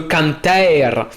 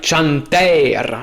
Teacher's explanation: cette fameuse mutation du son que en son tch. Et ça, justement, ça va apparaître seulement en français.